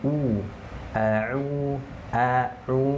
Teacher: Huruf yang berharakat fathah dibuka mulutnya, yang berharakat dhammah mencucu, monyong